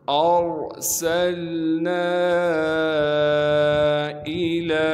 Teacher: حمزہ کو بغیر کھینچے پڑھیں گے، بغیر جھٹکے کے پڑھنا ہے۔ لام پر کڑا زبر ہونے کی وجہ سے لام کو 1 الف کے مقدار کھینچیں گے۔